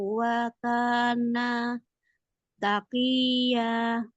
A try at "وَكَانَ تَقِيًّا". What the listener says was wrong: Wa kana taqiyya. Taqiyya. Kuatin taqiyya.